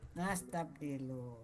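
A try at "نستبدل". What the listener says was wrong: Ya, muntas ya, Bu.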